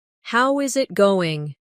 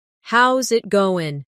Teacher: The is disappears and the final G in going often softens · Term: connected speech